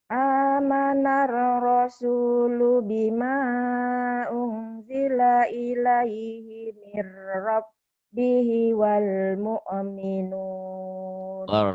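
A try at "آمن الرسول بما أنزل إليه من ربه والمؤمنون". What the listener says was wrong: Walnya jangan ada e-nya ya.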